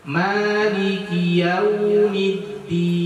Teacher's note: di huruf Yaumiddin itu ada isyarat mengumpulkan bibir ke depan atau memenyungkan mulut karena dia ada huruf waw yang mati